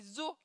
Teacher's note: on voit le pluriel à la fin du mot, mais on l'entend au début du mot qui suit. Donc à l'oral, le pluriel de O est zo, mais pas à confondre avec le zoo, l'endroit avec des animaux. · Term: liaison